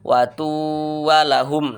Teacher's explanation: ketika kita melafazkan watu walahum, itu kan masih terasa gunnahnya, masih sangat terasa sengaunya di hidung.